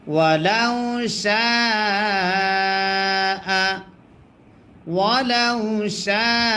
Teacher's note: জবর লাউ ওয়ালাউ ওয়ালাউ শিন আলিফ জবর শা মাদ্দে আসর বামে গোল হামজা যদি হয় চার আলিফ টানতে হয় মাদ্দে মুত্তাসিল তারে কয়